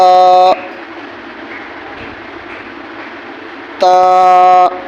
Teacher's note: زبان اوپر کے دانتوں میں لگے گی اور لگنے کے فوراً بعد زبان ہٹ جائے گی۔